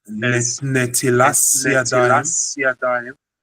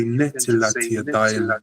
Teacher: The Ashkenazim pronounce it as Netilas Yadayim because they pronounce the second tav without a gesh as an S sound